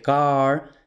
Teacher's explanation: la A de car es demasiado abierta en inglés, además es larga